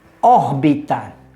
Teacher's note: a palavra órbita tem três sílabas e seu acento tônico está em Ó seu acento gráfico também está em ó porque seguindo as regras